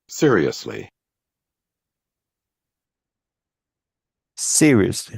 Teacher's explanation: So the stress is at the beginning.